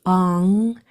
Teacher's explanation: made with the back of your tongue going to the back of your throat and staying there. It's kind of a nasally sound. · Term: NG sound